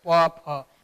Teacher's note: जब हम प फ ब भ पढ़ते हैं तो हमारे दोनों ओष्ठ आपस में स्पर्श करते हैं। बोलकर देख सकते हैं, प फ, बिना स्पर्श के इसका उच्चारण नहीं होगा।